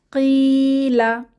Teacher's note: এখানে ইয়ামাদ এসেছে এক আলিফ টেনে পড়বো